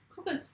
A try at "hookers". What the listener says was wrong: Hookers. Not cookers. Hook. Cook.